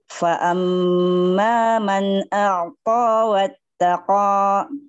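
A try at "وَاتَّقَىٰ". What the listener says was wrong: Jangan kasih hamzah. Wattaqo.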